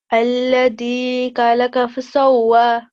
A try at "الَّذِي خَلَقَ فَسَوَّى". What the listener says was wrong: Okay, so you are reciting this as the, but this is zal, so we have to make the sound alladhi. Can you hear the difference?